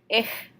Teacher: the CH in German can also be more like a hiss almost. It's a H, ich.